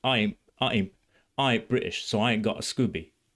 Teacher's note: because of the glottal stops, it feels British to me. It feels like Cockney to me.